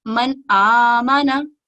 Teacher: ہم اس میں نون میں غنہ نہیں کریں گے اور اس کو صاف اور واضح پڑھیں گے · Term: इजहार